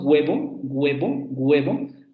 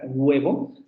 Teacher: su lengua se echa un poco hacia la zona vela y redondean los labios vibran las cuerdas vocales